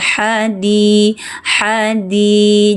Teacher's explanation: ini huruf tenggorokan tengah, ha, jangan diperpanjang, langsung ke Hadi.